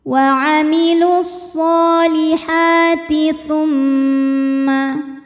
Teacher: mimnya gunnah musyaddadah karena mim bertasydid. Cara membacanya adalah didengungkan.